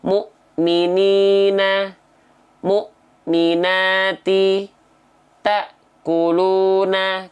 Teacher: syiddah tertahan suaranya contoh mukminina mukminati taquuluna Kenapa terhentak terhenti karena ketemu Hamzah sukun yang dia punya sifat namanya syiddah tertahan suara · Hamzah punya sifat syiddah, tertahan suara. Makanya huruf-huruf yang bertemu dengan hamzah sukun syiddah, tertahan suaranya.